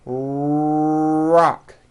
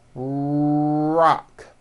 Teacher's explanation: notice how my lips are coming forward and my tongue moves back in my mouth and I push out the are sound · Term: American our sound